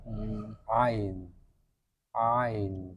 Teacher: mengalirnya sebagian suara pada saat pengucapan ain karena katuk anak lidah kembali ke belakang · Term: bainiah